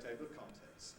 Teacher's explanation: what i usually do in table of contents is i de-syllabify the l